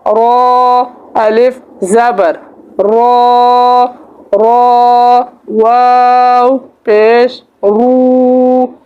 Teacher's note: را ایسے پڑھتے ہیں, را زبر را, را علی زبر را, ایسے را نہیں پڑھیں گے, ہم اس کو موٹا پڑھیں گے. جب را کے اوپر زبر یا پیش آتا ہے تو را کو ہم پور پڑھتے ہیں, موٹا پڑھتے ہیں